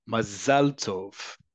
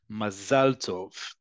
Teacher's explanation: So make sure that that's an ah vowel, two ah vowels, ah.